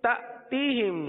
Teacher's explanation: حمزہ ساکنہ پر جھٹکا دیں گے